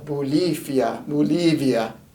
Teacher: an f will often substitute a v sound